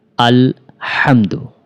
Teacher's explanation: হায়ের উচ্চারণটা পাতলা করে উচ্চারণ করতে হবে